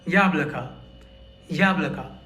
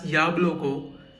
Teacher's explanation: the two O's are unstressed. That's why they are read as a and not o.